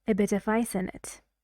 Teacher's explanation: consonant vowel consonant vowel consonant vowel consonant vowel and these blend together they mix and they become like one word